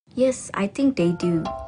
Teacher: She uses a fall rising tone appropriately to indicate that she doesn't really know or is unsure.